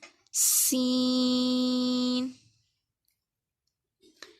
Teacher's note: اس کو سیٹی کی آواز نکال کے پڑھنا ہے